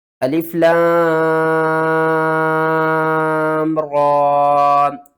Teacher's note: 5 الف کے برابر لام کو کھینچنا ہے اور را کو 1 الف کے برابر